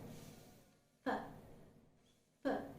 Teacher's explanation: In order to articulate the sound f, the upper teeth is pressed on the lower lips, as in f. F. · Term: Labiodental Fricative